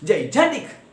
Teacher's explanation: we give more stress or force on the second syllable Jan. · When pronounced the way it should be pronounced, Jan is pronounced with the most stress or force or loudness. · the syllable Jan is heard with more force than other two syllables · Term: stressed syllable